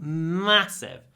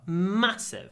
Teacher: like this word massive try to make the M long massive it's a short a with a long M